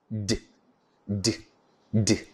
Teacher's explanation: d is a voiced alveolar plosive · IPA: /d/